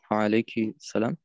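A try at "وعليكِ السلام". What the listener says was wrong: Nur, dass du verbinden musst. Wa alaikis salam. Das musst du verbinden. Wa alaikis salam. Dieses L, also dieses der, die das, das Artikel, geht dann weg.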